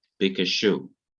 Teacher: the kof is not doubled, it just remains one